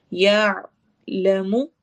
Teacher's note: یا آواز کو حلق کے درمیان میں ٹھہرانا ہے تو عین کی ساؤنڈ نکلے گی